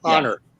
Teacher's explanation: starts with one we don't write it down because it's non-phonemic if you want to not have the glottal stop you begin it with a silent h